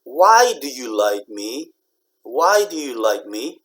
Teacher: for information questions, it just stays flat